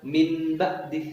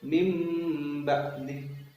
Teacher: mengganti suara nun mati menjadi suara mim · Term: iklab